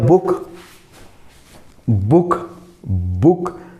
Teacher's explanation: बगैर मेरी होंठ मिले बुक का उच्चारण हो ही नहीं सकता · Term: व्यंजन